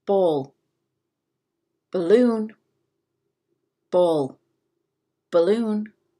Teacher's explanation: to the difference in those four letters between these two words in the word balloon the emphasis the stress is on loon